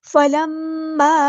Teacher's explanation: فلما، میم پر غنہ زمانی ہو رہا ہے اور یہاں پر چھوٹی مد ڈسکنیکٹڈ مد آ گئی ہے، 2 یا 4 to 5 کاؤنٹ ہم اس کو لمبا کریں گے۔